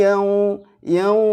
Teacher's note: enggak boleh dipanjangkan juga karena ini hanya huruf Lin kecuali kita berhenti di Yaum